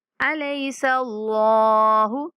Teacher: यहाँ पे अल्लाह का लाम मोटा करके पढ़ेंगे अलैसा अल्लाहु, क्योंकि अल्लाह के लाम से पहले अगर ज़बर या पेश वाला हरफ आ जाए तो हमने अल्लाह के लाम को मोटा पढ़ना होता है, अगर ज़ेर वाला हरफ आ जाए तो अल्लाह के लाम को बारीक पढ़ना होता है।